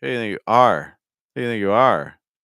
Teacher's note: I'm stressing the word are and so that means I have so many words that aren't stressed right I have the who not stressed do not stressed you